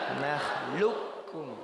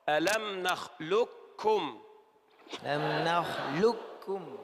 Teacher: أدغمت إدغاما كاملا، ننطق كافا فقط